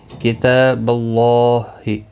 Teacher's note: اللہ کا لام زبر کی وجہ سے پر پڑھا جائے گا، اس کے اوپر کھڑی زبر بھی ہے، ایک الف کی مقدار کے برابر کھینچ کر پڑھا جائے گا۔